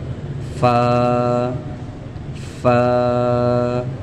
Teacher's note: ऊपर के दांतों के किनारे और निचले होठ के गीले हिस्से से फ अदा होता है।